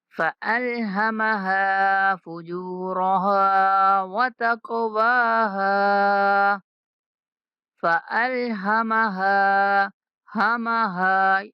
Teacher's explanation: ہا جو ہے بھاری آواز میں پڑھیں گے، حلق کے سب سے نچلے حصے سے ادا ہوگی